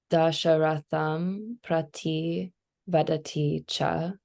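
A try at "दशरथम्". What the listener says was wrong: remember, that's Dasharatam. Yeah, it's dental ta, not tha. Ta.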